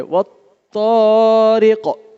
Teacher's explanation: وہ طارق میں تو کو موٹا کرنا ہے، اور قاف کو بھی موٹا پڑھنا ہے. اور اس کا وقف کریں گے نا جب، تو قلقلہ ہوگا.